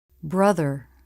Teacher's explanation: Tongue tip through the teeth for the voiced TH. Lips and tongue are relaxed.